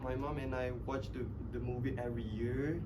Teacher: they tend to make the year sounds a bit up and and he will drop down again for the next word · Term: rising intonation